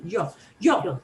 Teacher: a little ju before the yo sound it's common